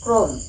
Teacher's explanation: অকারের পরে যদি র ফলা থাকে এই যে র ফলা যদি থাকে তাহলে অ এর উচ্চারণ ও এর মত হবে